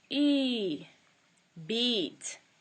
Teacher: This is held for 2 matras, 2 lengths of time, whereas the short one is 1 length of time.